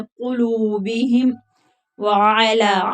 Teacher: कुलूबिहिम व अला आइन हरूफ हल्की है, लाम के ऊपर खड़ी जबर है तो खींच कर पढ़ेंगे